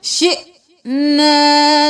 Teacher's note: حمزہ کو جھٹکا دے کر پڑھیں گے، حمزہ کے اوپر جزم ہے، شینا نہیں کرنا.